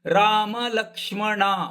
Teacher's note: ಮೂರು ವ್ಯಂಜನಗಳಇರುವುದರಿಂದ ಲ ಮೇಲೆ ಆಘಾತ ಕೊಟ್ಟಿಲ್ಲ ಸಹಜವಾದ ಆಘಾತ ಬರ್ತದೆ